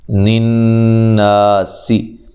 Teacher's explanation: مشدد پہ غنہ ضروری ہے اور الف مدہ ہے، ٹھیک ہے، سین کو باریک سیٹی سے اور لمبا نہیں کرنا